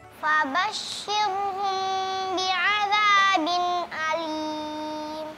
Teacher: Huruf shinnya tipis, ro-nya juga tipis.